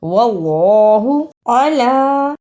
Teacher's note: اسے الا نہیں پڑھنا، عین کی صحیح آواز آنی چاہیے